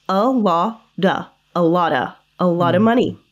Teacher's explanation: the T in lot, which is pronounced as a flap T sound. So we pronounce it as a duh.